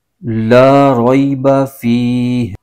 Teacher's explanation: فی میں یا مدہ ہو رہا ہے، اس کو ایک الف کھینچ کے پڑھیں گے